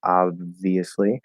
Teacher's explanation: Now, the more you get the lips closed, you don't have to completely close them. But the more you get the lips closed, the more there's going to be an illusion of the B.